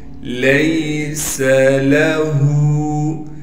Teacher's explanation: سین کو بغیر کھینچے سین میں سیٹی ادا کر کے پڑھیں گے · لام کو بغیر کھینچے پڑھنا ہے۔ ہا پر الٹا پیش ہونے کی وجہ سے ہا کو ایک الف کی مقدار کھینچیں گے